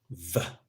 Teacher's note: You make use of the upper teeth and the lower lips.